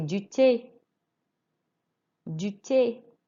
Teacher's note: It's not a th, it's just a T sound. You don't sound the H.